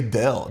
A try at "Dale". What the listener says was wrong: You say it like D-E-L-L even though it's D-A-L-E.